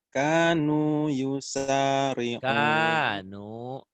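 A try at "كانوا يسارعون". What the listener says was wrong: Kanu panjang.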